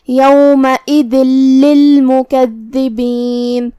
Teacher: آخری میں یہاں حرف الدال ہے، دال کی ادائیگی زبان کے سر اور اوپر والے دانتوں کے اندرونی کناروں سے ہے، ہم دال کو وہیں سے پڑھیں گے جو کہ اس کے نیچے تنوین زیر ہے۔ · پھر حرف اللام آتا ہے کلمت للمکذبین، یہاں حکم ہے ادغام بغیر غنہ، تو ہم یہاں تنوین کو لام میں داخل کر کے تشدید کے ساتھ لیکن بغیر غنہ سے یہ حکم کو ادا کریں گے